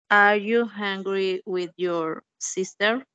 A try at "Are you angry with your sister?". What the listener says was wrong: But remember that the pronunciation is very important here. So I heard that you said hungry, but the correct pronunciation is angry, angry. Okay, but angry. The sentence, angry, angry. Are you angry with your sister?